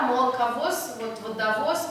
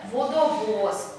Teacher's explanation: Все гласные одинаковые, одинаково полные, не редуцируются, не меняют свое качество.